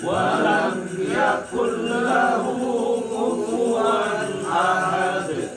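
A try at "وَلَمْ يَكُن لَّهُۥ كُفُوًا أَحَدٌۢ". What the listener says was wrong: Oh, ahad masih ketuker tuh. Ahad haknya kecil, ahad. Biasanya orang baca kufuwan, padahal itu hurufnya waw. Wan, win, wun. Wan, kufuwan. Pastiin itu huruf waw, bukan kufuwan, bukan huruf alif, an, in, un, kufuwan, tapi kufuwan. Waw.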